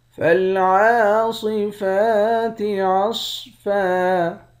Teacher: عین پر کھڑا زبر ہے، فا پر بھی کھڑا زبر ہے، ان دونوں کو ایک ایک الف کی مقدار کھینچیں گے، صاد کو موٹا پڑھیں گے، اس والے صاد کو بھی موٹا پڑھیں گے، آخر میں دو زبر کی تنوین ہے، دو زبر کی تنوین میں جب وقف کرتے ہیں تو ایک زبر بن جاتا ہے۔